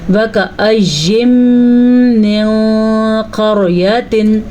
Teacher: रॉ साकिन है और रॉ साकिन से पहले हर्फ पे ज़बर है तो इस रॉ को हम पुर पढ़ेंगे। पुर का मतलब है मोटा करके